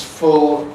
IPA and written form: fʊl (full)